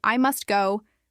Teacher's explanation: how sounds can be dropped, like in I must go, where the T is often silent